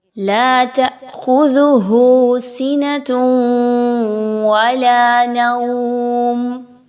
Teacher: الف مدہ لا 1 سے 2 الف کے برابر لمبا کریں گے